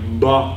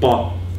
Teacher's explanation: So a voiced plosive would be something like ba, with, you know, that voicing before the plosive during the closure of the plosive. Ba and pa would be the voiced voiceless distinction in Afrikaans.